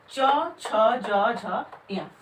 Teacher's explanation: इनका उच्चारण करते समय हमारी जिह्वा जो है तालु से स्पर्श करती है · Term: तालव्य